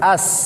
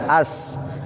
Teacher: As, jangan as, tetapi as. Harus ada suara sofirnya, kayak siul. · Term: sin kecil